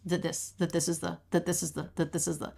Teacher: You have to really simplify your jaw movement, your tongue movement. All of these THs, that, this, the, they're all the voiced TH, and they're all beginning an unstressed word.